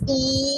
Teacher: Suppose this is the diagram of this is the tongue of our mouth, and when we make the sound e, what we notice, e, it is closed and from the front position of the tongue, and it is closed, e.